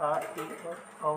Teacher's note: फिर विवृत स्वर। इसमें सबसे अधिक मुंह खुलता है। इसके अंतर्गत आ, ए और औ शामिल है।